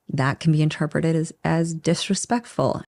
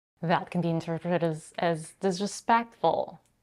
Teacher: she aspirates the first T in the word interpret